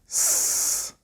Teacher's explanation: When I say it's not vocalized, I mean that we do not use our vocal cords to make the sound, the S sound. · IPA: /s/